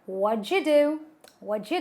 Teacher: the T in the what and the D in the do gives you a J sound.